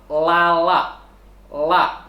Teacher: la bunyinya keluar dari tepi lidah sebelah kiri atau kanan hingga penghabisan ujung lidah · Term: ujung tepi lidah